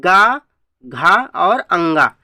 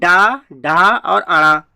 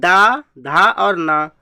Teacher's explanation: देखो इसी को घोष भी बोला जाता है, सघोष को। देखो वर्गीय व्यंजनों का तीसरा, चौथा और पांचवा क्या होता है वर्ण, क्या होते हैं हमारे, ये सघोष कहलाते हैं